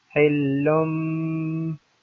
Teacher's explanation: we have to turn the tanween, the noon of tanween, into meme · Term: iqlab